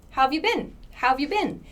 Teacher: Native speakers will reduce this part, how have, to how of. So this becomes how apostrophe VE, how of, and the YOU becomes ya.